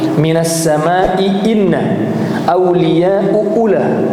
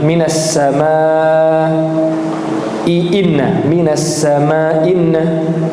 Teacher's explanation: hilang hamzah pertamanya, dan itu ada dalam qiraatnya Abu Amr